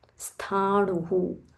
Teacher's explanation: Half sa followed by Mahaprana tha.